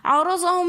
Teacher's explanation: عرضہم میں را کے اوپر زبر ہے تو اس لیے ہم نے را کو موٹا کر کے پڑھا